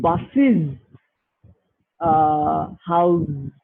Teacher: if it occurs with sibilants, such as sa or sha or za, any of these three sounds, then it inserts an E sound.